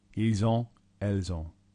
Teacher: Notice how you do pronounce the S in this situation where you haven't in other examples because of the next word beginning with a vowel.